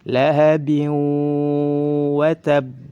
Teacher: Jika ada tanwin atau nun sukun berdampingan dengan huruf waw atau huruf yang lain yang 4 tersebut, maka harus dibaca dengan dimasukkan. Lahabin, kemudian disertai dengan gunnah, ditahan 2 harakat. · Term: idgham bigunnah